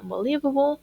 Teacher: vemos que la tercera sílaba es acentuada, pero que también hay una sílaba primaria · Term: acentuación